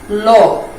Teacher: এই ল যখন তুমি উচ্চারণ করবে তখন জিহ্বার যে অগ্রভাগ রয়েছে সেটা মাঝামাঝি দন্তমূলে ঠেকিয়ে জিহ্বার দুই পাশ দিয়ে কিছুটা বাতাস বের হয়ে আসবে, বায়ু বের হয়ে আসবে। এই জন্য এই ল কে বলা হয় পার্শ্বিক ধ্বনি।